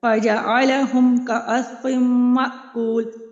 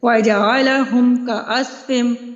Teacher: یہاں پہ اظہار شفوی کا قاعدہ ہو رہا ہے، یہاں پہ میں نے میم کو ظاہر کر کے پڑھا ہے، فوراً سے اس کو اس کے مخرج سے ادا کر دیا ہے، رکی نہیں، ہونٹوں کو میں نے جوڑا ہے ساتھ ہی ادا کر دیا ہے